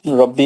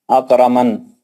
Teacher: را کو موٹا پڑھنے کی پہلی کنڈیشن ربی, اور یہاں پہ مد منفصل ہوگا. چار حرکت کھینچ کر پڑھیں گے. اکرمن, تو یہاں پہ بھی را کو موٹا پڑھنے کی پہلی کنڈیشن.